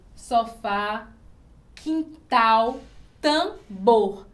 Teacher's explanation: a sílaba mais forte que a gente ouve é na última sílaba então quando isso acontece na palavra nós chamamos de óxi tona